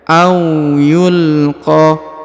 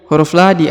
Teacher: Kemudian huruf qa dipanjangkan 5 harokat ya, karena di atas terdapat tanda bacaan panjang 5 harokat.